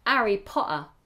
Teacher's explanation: if you were doing a cockney Harry Potter Harry and you might even drop the H as well